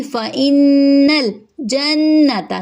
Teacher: نون پہ تشدید ہے غنہ کریں گے اور حرکت لمبی نہیں ہوگی، تا کی حرکت لمبی نہیں ہوگی۔